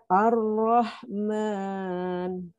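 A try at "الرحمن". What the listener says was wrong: Ulang lagi. Ar-Rahman. Ma, coba ma-nya jangan hidung. Ma.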